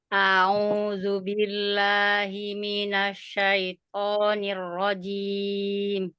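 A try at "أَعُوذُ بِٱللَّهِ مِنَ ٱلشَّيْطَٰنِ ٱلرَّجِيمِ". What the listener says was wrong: A ke au jangan diseret. A'u.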